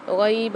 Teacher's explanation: غین کے ساتھ یا مد آ رہی ہے تو یہاں پر ایک الف مدار کھینچ کے پڑھیں گے